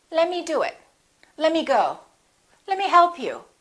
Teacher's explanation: let me often becomes lemmy the t disappears